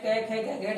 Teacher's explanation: व्यंजन में जो क वर्ग है, क वर्ग में जो 5 वर्ण है, क ख ग घ है, ये कंठ से बोले जाते हैं।